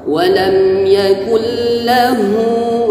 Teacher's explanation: ha besar dengan tenggorokan yang paling jauh.